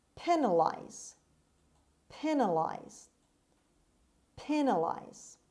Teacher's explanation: stress is at the beginning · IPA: /ˈpiːnəlaɪz/